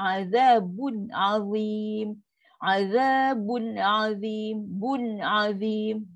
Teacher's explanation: Nun mati atau tanwin bila jumpa dengan huruf halkum memang takkan ada dengung ekstra. Tak ada. Tak ada penambahan pada dengung. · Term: izhar